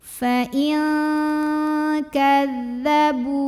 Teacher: Di sini ada hukum ikhfa ab'ad karena ada nun sukun yang menghadapi huruf kaf. Maka cara baca nun sukunnya ini adalah samar-samar, siap-siap menuju huruf kaf disertai dengungan. Dan ini dengungnya besar, jadi paling eng.